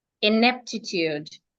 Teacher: the word is rightly stressed on the second syllable.